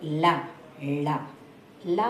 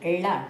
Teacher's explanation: ళ tongue twist అయింది చూడండి ఆ టంగ్ ట్విస్ట్ అయినప్పుడు వచ్చిన ళ